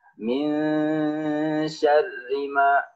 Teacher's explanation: ra di sini kenapa dibaca tipis karena ingat dia berbaris kasrah kalau ra dia berbaris kasrah berbaris bawah maka dia dibaca tipis